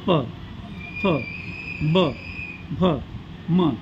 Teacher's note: खालच्या व वरच्या ओठांचा उपयोग करून जे वर्ण उच्चारतात त्यांना ओष्ठवर्ण असे म्हणतात